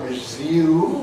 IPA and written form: rɪˈzjuːm (resume)